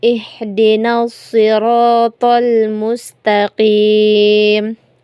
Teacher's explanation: Kemudian pada ayat yang keenam yaitu Ihdinas siratal mustaqim. Kebanyakan kesalahan yang sering terjadi adalah to ini yang dibaca ta padahal ini to